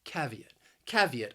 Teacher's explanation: Then we have the word caveat, which is a warning to consider something before taking any action. The word has three syllables, and the stress also, it's on that first syllable.